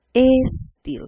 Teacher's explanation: Algo natural que hacemos es agregar la E inicial.